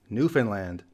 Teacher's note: The emphasis is at the land at the end.